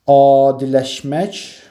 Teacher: adiləşmək sözündə İlk sait uzun tələffüz olunur